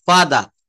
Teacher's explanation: ব্রিটিশরা কিন্তু এই ফাদার বলে না ওরা কিন্তু শেষের র টা আর টা উচ্চারণ করে না